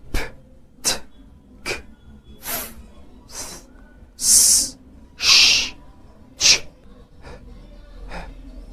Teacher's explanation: واللي هي يا جماعه خلوها بدون اهتزاز، كانك بتنهج كده ومش قادر تاخد نفسك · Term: الفويسلس ساوندز